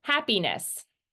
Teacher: the ness is more of an I sound than it is an eh sound